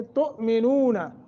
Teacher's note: تؤمنون جھٹکا دے کے پڑھیں گے, حمزہ ساکن ہے